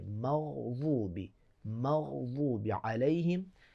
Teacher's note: جب آپ مغضوب ساکن کریں گے تو آواز کنٹینیو رہے گی غین پہ